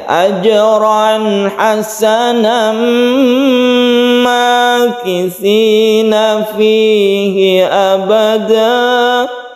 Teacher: Misalnya ya, ajran hasanam makithina fihi abada. Maka kita menjadi idgham bi gunnah karena tanwin bertemu dengan mim, kita dengungkan.